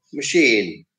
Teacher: it gets the accent on the second syllable · ma is a syllable, and then sheen is another syllable. So there, the second syllable gets the accent